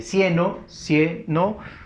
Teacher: cieno, cieno, fuerza de voz en la cie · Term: acento prosódico